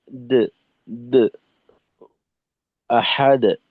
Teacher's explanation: আর আহাদ, এদিকে না, আহাদ, আহাদ পাতলা নিম্নমুখী, দো হলে তো আপনার একটু ঊর্ধ্বমুখী চলে যায়, বা আওয়াজটা ঠোঁটের অবস্থানটা একটু পরিবর্তন আসে।